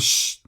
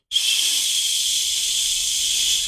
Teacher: No hay detención para el sonido, nadie los puede detener, ellos pueden seguir. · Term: sonido fricative